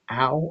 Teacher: We don't call ow a vowel. ow is actually ah followed by oo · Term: two vowel combo